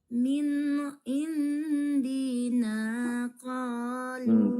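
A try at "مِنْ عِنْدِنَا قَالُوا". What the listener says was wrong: Cepat kan? Kenapa jadi cepat ya?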